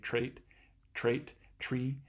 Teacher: a little bit further back too you can make a ta you can kind of curl your tongue tip back to make a tr tr um sound if it's next to an r makes it a little bit easier to say trait trait tree